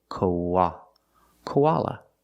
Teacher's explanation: The last A is pronounced with the relaxed sound, like cup and up, koala, koala. When we link the O and the ah, koa, we have the w sound in the middle, koa, linking the sounds like a W sound, koa, koala.